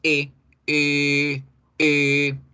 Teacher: Poníamos la boca como si fuéramos a hacer la O, pero en vez de O decíamos E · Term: E larga